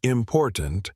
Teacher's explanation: in the word important, the stress is on the second syllable